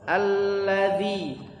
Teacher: huruf dza lidahnya ujung lidah dikeluarkan sedikit ditempelkan dengan langit-langit gigi seri atas